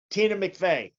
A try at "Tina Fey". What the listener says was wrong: Tina Fey. There's no Mick.